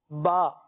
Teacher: با کا مخرج یہ ہے کہ دونوں ہونٹوں کے تر حصے سے یہ حرف ادا ہوتا ہے